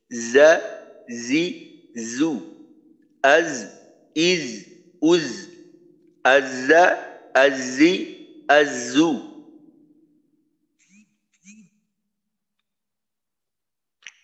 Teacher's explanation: জিহ্বার আগা সামনের নিচের দুই দাঁতের পেটের অংশে লাগবে, আগার নিচের অংশে। যা উচ্চারণ করার সময় উপরের দাঁত নিচের দাঁতের সাথে লাগানো যাইতে পারে, এতে করে সমস্যা হবে না।